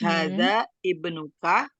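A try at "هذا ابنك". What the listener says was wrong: Coba Umi, hamzah wasalnya dihapus. Langsung nyambung wasol.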